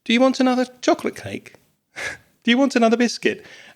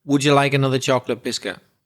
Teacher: that rising and falling makes the expression really polite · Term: intonation